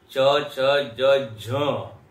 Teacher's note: च के बाद छ, छ में देखिए ज्यादा शक्ति लगती है। च, छ, ज, झ, उसमें ज्यादा शक्ति लगती है, महाप्राण हो गया।